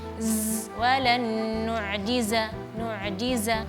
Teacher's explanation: huruf sin, huruf shad, dan huruf za itu dari satu makhraj. Maka desisnya harus agak jelas, lebih jelas lagi. Apalagi di huruf za itu desisnya lebih tinggi.